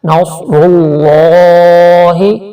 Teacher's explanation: کھڑی زبر ہے ایک الف کے برابر کھینچیں گے